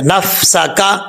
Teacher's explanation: نون کے بعد فا ہے, آگے سین حروف صفیریہ میں سے ہے, سیٹی کے ساتھ پڑھا جائے گا